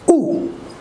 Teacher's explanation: half close back of the tongue and round it